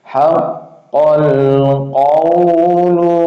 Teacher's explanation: qafnya ini tasdid ya, nabar 1 harokat aja, masuknya 1 harokat, keluar 1 harokat, langsung ke huruf lam sukun.